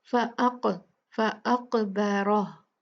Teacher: फ़अक़, क़ाफ पे हम क़लक़ला करेंगे, क़ुतुबु दिन में से है, क़ाफ जब भी साकिन होगा उसको हम झटके से पढ़ेंगे, उसको हम शेक करके हिला के पढ़ेंगे। फ़अक़, फ़अक़बरह, रा हैवी होगा क्योंकि इस पे फतहा है, और हा को साकिन कर देंगे और वाव नहीं पढ़ेंगे।